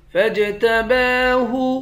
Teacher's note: جیم کو قلقلہ کر کر پڑھیں گے۔ جیم حروف قلقلہ میں سے ہے۔ با پر کھڑا زبر ہے، ایک الف کے مقدار کھینچیں گے۔